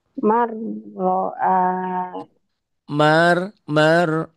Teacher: Saat berhadapan dengan ro ya bunyi n-nya hilang melebur. N-nya jadi r. Man jadi mar.